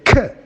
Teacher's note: is a voiceless velar plosive stop